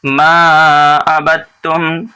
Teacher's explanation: یہاں دال نہیں پڑھا جا رہا ہے، اس لیے نہیں پڑھا جا رہا ہے کہ اس کے بعد والے حرف پر تشدید ہے. جس حرف پر جزم ہو اور اس کے بعد والے حرف پر تشدید ہو تو اس حرف کو نہیں پڑھتے، دوسرے والے حرف کو پڑھتے ہیں.